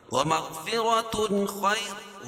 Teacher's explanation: تنوین کے بعد حروف حلقی کے 6 حرف حمزہ، ہا، عین، ہا اور غین، خا میں سے خا ہے تو یہاں اظہار حلقی ہوگا۔